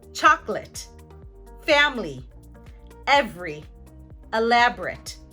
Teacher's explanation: This is called syncope. Now they remove the schwa when the schwa falls in the middle of a multisyllabic word, 3 syllables or more, and it falls right after the stressed syllable